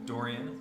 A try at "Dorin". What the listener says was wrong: Dorin. There's no A. You said Dorian.